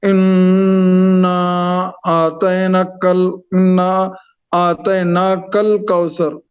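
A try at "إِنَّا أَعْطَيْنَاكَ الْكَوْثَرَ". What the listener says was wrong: ना को खींचना है, मध्य मुनफसिल है ना।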